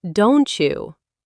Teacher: And it's not just D. If a word ends in a t and the next one starts with a y, they turn into a ch sound.